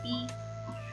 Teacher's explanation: हम कहते हैं P, इसके साथ हम थोड़ा सा puff of air यूज़ करेंगे P, ठीक है। P के साथ थोड़ा सा puff of air हम यूज़ करें तो ये साउंड हो जाएगी P · P is aspirated, released with a strong puff of air when it occurs initially in a stressed syllable। यानी जो P होता है वो puff of air के साथ प्रोड्यूस होता है।